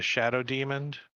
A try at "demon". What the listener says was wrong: the word demon with a D on the end of it. Is that how you say it? But you're saying shadow demoned. You have you've been doing it since I've known you. Right, but you don't. That's not what you say. You say shadow demoned with a D on the end, and you always have.